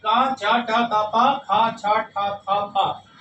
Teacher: पहला दूसरा वर्ग जो है कच त, अछट त ये अघोष वर्ण है। यानी इनको बोलने में जो स्वर तंत्रियां वो झंकित नहीं होती।